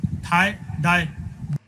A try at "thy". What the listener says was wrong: No, not die, but it's thigh, thy. So the key here is you need to put your tongue in between your teeth when you produce that sound.